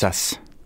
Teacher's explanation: The voiced sibilant at the end, the z, and the other one has the unvoiced sibilant.